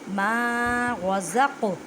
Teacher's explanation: قاف ساکن ہے، قلقلہ کریں